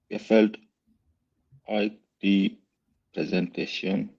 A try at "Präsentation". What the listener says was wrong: Read it like a German. Presentation. Yeah, presentation.